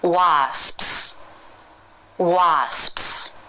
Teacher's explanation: it's just one long s while we close the lips throughout making an SPS sound now of course in the cluster you'll just close your lips